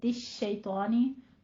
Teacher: खुतुवातिश शैतान, ता बारीक रहेगी, तिश शैतानी, त्वा में आप मुस्तालिया हरूफ में से है तो इसको पुर भी पढ़ेंगे और अलिफ मद्दा अदा करना है।